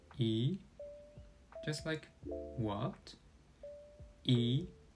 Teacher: The second tone is similar to a surprise or questioning intonation